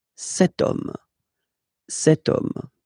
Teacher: as in French, H is not pronounced, so the first sound that we hear is O, okay, and then it will follow the same rule.